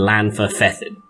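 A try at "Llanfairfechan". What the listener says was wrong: Clanfairfeckin. Clanfairfeckin. Fechan, not Fethan.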